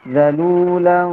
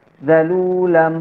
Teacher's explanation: Zalulan, tidak boleh tertutup mulutnya. Zalulam, kalau tertutup itu tidak samar, jadi jelas suara mimnya. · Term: ikhfa